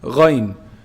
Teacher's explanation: Ghayn is pronounced from the highest part of the throat. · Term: throat sounds